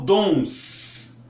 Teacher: Vejam que ela sibila mesmo. Ela faz esse barulho sibilante, como se fosse uma cobra.